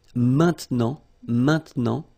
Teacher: Normally we tend not to pronounce this e, okay? So we get this maintenant